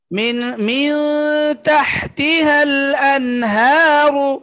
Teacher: قلنا عدن تجري من تحتها الأنهار মিউ ইখফা গুন্না পাতলা হবে গুন্নাটা পাতলা হবে নুনের পরে তাটা পাতলা